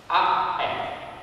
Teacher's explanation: ovviamente da lungo a lungo le vocali sono sempre una cosa che cambiano più facilmente. Comunque la fa non è proprio una A, è più tra A e una E aperta